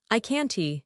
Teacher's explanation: In American English, the T in can't is often silent, they stop the air. I can't. So I can go and I can't go sound the same.